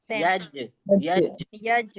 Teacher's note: या का मखरेज में हमारी जबान का बीच का हिस्सा ऊपर से टच हुआ और जीम में भी सेम · یا کا مخرج میں ہماری زبان کا بیچ کا حصہ اوپر سے ٹچ ہوا، اور جیم میں بھی سیم. یج یج ہے نا، یہاں ڈبل ساؤنڈ آئے گا.